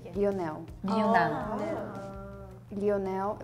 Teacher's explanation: other countries we don't really pronounce the L after we say it's a u sound not an l sound for us Leon Leonel that's how we pronounce L's in this sort of